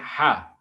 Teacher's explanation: one sound that is produced without the active use of the tongue and other parts of the mouth. It's a sound ha, which occurs at the beginning of the ha and house when the glottis is open and there's no manipulation of the air passing out of the mouth. · सिर्फ हवा direct आएगी और sound निकालेंगे हा, ठीक है। तो आवाज निकलेगा हा, जिसको आप ग्लोटल साउंड कहेंगे।